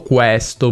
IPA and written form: quɛsto (questo)